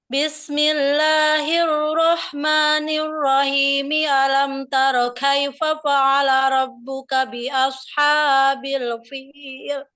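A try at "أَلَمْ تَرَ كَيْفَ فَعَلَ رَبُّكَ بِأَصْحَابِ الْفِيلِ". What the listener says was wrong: Nah, untuk mad tabi'inya diperbaiki lagi, panjang dan pendeknya belum tepat karena mad tabi'inya selalu lebih dari 2 harokat. Ya, jadi khawatirnya kita jatuh kepada tamtid atau menambah-nambah jumlah harokat, ya.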